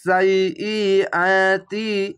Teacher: ইয়াটিকে দুবার উচ্চারণ হবে। সাইআতি, এখানে তি বলে না হবে।